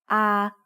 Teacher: a long vowel that makes the sound ah like the a in father